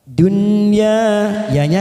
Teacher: nun sukun bertemu ya namanya Idhar mutlak atau Idhar wajib kita baca jelas tanpa mendengung walaupun di sini warnanya merah tetapi ini dibaca jelas namanya idhar